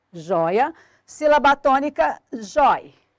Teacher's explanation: perdeu o acento, continua com sonoridade aberta, mas não mais com acento.